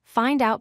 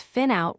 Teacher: with both the D and T dropped